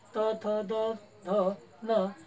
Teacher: माहिती आहे त थ द ध न या वर्णांचा उच्चार करताना जीभ सरळ राहते आणि समोरील दातांना स्पर्श करते